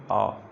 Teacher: ऐसा सिर्फ एक ही स्वर है जिसके उच्चारण में मुख आपका पूरा खुलता है, वह है आपका दीर्घ आ। दीर्घ आ जो है इसके उच्चारण में आपका मुख जो है पूरा का पूरा खुलता है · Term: विवृत्त स्वर